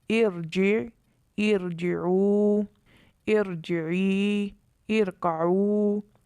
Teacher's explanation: ان تمام مثالوں میں الف کے نیچے جو زیر ہے یہ عارضی طور پر لگائی گئی ہے، اس لیے اس را کو پر پڑھا گیا ہے